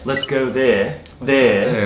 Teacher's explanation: あの▁air▁の音は全部▁a▁って▁a▁の長母音に変わっちゃうんですよね